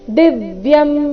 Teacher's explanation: ದಿವ್ಯಂ ದಿ ಮೇಲೆ ಆಘಾತ